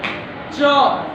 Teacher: च देखो, च, छ जाएगा हमेशा जीभ ऊपर, तालु में मार देगा और वहां से आवाज बाहर आएगी